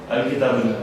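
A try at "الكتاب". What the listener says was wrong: It will be uno. Un nahi hai.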